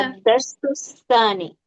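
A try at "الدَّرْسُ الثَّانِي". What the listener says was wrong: इसमें सीटी नहीं आएगी, ठीक है।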